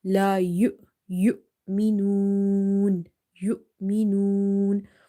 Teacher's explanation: So waw itself, we are not reading it, but we are reading Hamza having sukoon. So we will give it a sudden pause.